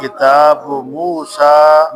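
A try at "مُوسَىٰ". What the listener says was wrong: موسیٰ لمبا کرنا ہے، مد اصلی ہے، مد بدل کی وجہ سے آگے حمزہ آ گیا، موسیٰ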